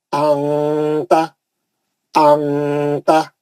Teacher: لگا کے کیا کرنا, منہ بڑا کھول دینا, منہ بڑا کھول کے آواز کو ناک میں لے آنا, آواز کو ناک میں لے آ کے غننے سے پڑھ دینا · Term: اخفا